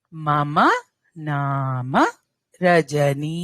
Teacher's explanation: మమ దీర్ఘాలు లేవు నామ నా కి దీర్ఘం మ కి దీర్ఘం లేదు